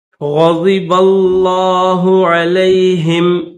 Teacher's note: ग़ैन को मोटा करेंगे, ज़ाद को भी मोटा करेंगे